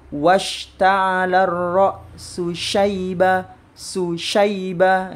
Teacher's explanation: harus switch dari shin yang punya karakter tafashi ke sin biasa ya